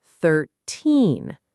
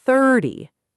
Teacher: The difference is all about stress. 13 stresses the second part. 13. 30 stresses the first part. 30. And the ending is softer, almost like 30.